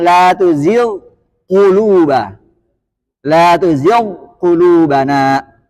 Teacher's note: Kalau sebelumnya kasrah, maka tingkatan di huruf ghain itu sangat rendah.